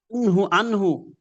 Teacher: নুনটাকে একেবারে স্পষ্ট করে পড়ছি, কারণ যে এরপরে ইজহারে অক্ষর হা আসে